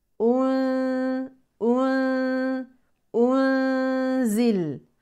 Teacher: لوضع السكون مع النون المخفاه ان ان ان انزل وليست انزل لا تبقى الشفتان على هيئه الضم خلاص ضمينا الهمزه نرجع للسكون مع النون